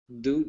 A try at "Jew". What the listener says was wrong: Jew. It's a J. Jew. Jew.